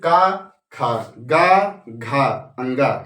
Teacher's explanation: पहले अल्प प्राण, फिर महाप्राण, फिर अल्प प्राण, फिर महाप्राण, फिर अल्प प्राण